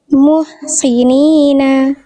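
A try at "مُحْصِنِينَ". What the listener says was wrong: Muhsinina. Jadi jelaskan tebal, angkat pangkal lidahnya. Muhsinina. Si. Nah, bunyi shotnya yang itu. Jangan berkurang. Muhsinina.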